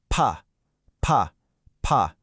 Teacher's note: You don't feel anything, right? Just a little puff of air from your lips? That's the whisper sound.